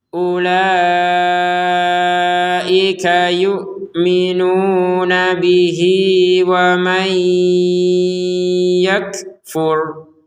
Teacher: Jadi panjang 2 harokat karena digabungkan.